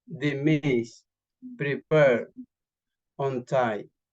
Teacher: Stress usually falls after prefixes, dismiss, prepare, untie.